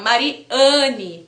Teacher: tem o som nasalizado porque o n Puxa essa nasalização da vogal